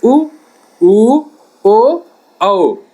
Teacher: जिन स्वरों के उच्चारण में ओठों का आकार गोल हो जाता है उन स्वरों को वृत्ताकार स्वर कहते हैं